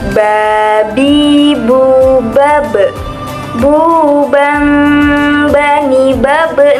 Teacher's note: dalam melafalkan huruf ba ini, posisi mati suaranya terdengar mantul